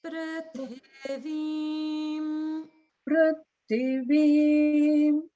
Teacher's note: So just notice in the prithivim, the swaras are a little bit different. So the pru is upper, then straight down to lower, and then middle.